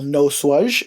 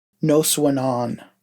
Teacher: When we add suffixes today, the ZH sound at the end will turn to an N sound